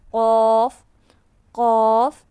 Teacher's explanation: قاف کو ہم نرم تالو کے ساتھ ادا کریں گے. زبان کی جڑ اور نرم تالو کے ساتھ لگا کر ادا کریں گے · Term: مستعلیہ حرف